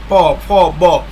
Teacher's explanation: আর ওষ্ঠবর্ণে আমাদের দুই ঠোঁট প্রসারিত হয়, প প বললে দেখেন দুই ঠোঁটে বাড়ি খাচ্ছে